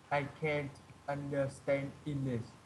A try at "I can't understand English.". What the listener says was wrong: That's correct.